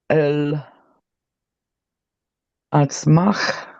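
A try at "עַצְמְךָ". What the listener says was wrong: It's not a tzadi, it's an ayin. Do you see the difference between the tzadi and the ayin? tzadi is the one with the ts. Ayin represents that sound that nobody likes. Emek. Emek.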